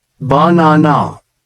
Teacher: the word banana is stressed on the second syllable